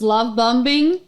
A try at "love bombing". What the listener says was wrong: Love bombing. Love bombing. You don't pronounce the last B in bomb.